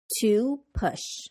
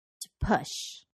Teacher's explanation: Because to is a preposition, a function word that creates the structure of the sentence, we de-stress it. So to becomes ta.